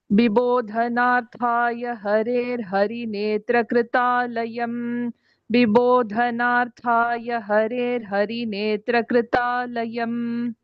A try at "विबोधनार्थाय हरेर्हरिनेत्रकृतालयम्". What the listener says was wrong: No dvitvam between Netra and Kritalayam.